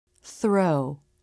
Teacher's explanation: Notice how the lips are starting to flare for the R as the tongue comes through the teeth for the unvoiced TH